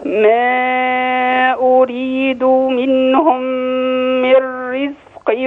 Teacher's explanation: را من رزق ترقق وبامكانك تقفي عليها وقف حسن